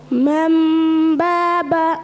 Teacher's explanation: नून नहीं पढ़ेंगे बल्कि मीम पढ़ेंगे। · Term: इकलाब